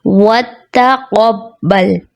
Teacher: اس کی درست ادائیگی وَتَقَبَّلْ، وَتَقَبَّلْ درست ادائیگی نہیں، درست ادائیگی ہے وَتَقَبَّلْ، تا کی باریکی پھر اس کے برابر میں قاف، قاف کی موٹائی کے ساتھ